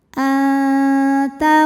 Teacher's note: Maka nunnya dibunyikan samar-samar, siap-siap menuju ta disertai dengung. Dengungnya sedikit ya, karena ta makhrajnya masih dekat dengan nun. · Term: ikhfa aqrab